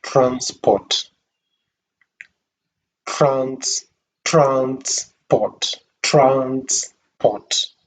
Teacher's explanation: When you underline the first syllable, trans, you read it with a rising intonation, trans. Then the unstressed part, port, is read with the falling intonation.